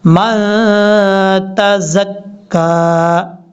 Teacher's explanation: میم کے بعد جو نون ہے یہ نون ساکن ہے، یہاں نون پر غنہ کریں گے، یہ نون ساکن کا اخفا ہوگا یعنی نون ساکن کا غنہ.